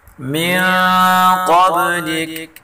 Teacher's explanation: قاف کو اوپر پڑھیں گے اور بعد میں قلقلہ ہے۔